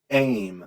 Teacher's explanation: in order to get that a out there you have to burst through your glottis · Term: glottal stop